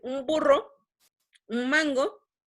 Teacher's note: Entonces, por ejemplo, si hacen el ejercicio de decir un burro, un mango, van a darse cuenta que no estamos pronunciando una N en el artículo, sino una M.